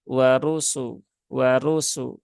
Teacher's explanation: Nah, jadi roknya tebal, sinnya tipis.